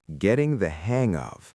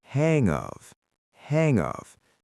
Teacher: The letter G at the end of hang connects directly to the letter O in of.